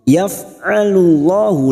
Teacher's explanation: lam jalalah yang sebelumnya dhammah kita baca tafkhim atau tebal.